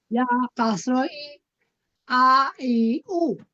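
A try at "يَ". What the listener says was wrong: আপা, এটা তো হামজা না, এটা হচ্ছে ইয়া। ইয়া,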